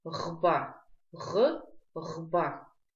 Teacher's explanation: При произношении происходит небольшая вибрация голосовых связок.